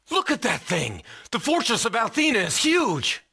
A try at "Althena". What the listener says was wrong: It's not Al. All. Not Al. Not Al. All.